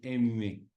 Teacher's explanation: esta M es labio dental o sea metes el labio debajo de los dientes